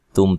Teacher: تم تا کو باریک، میم ساکن کا اظہار ہے، غنہ نہیں کریں گے